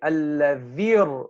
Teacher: We're saying alladhir. We're dropping the ya, right? To avoid the two consecutive sukoons.